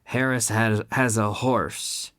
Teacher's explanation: In Spanish, the H is silent, but not in English.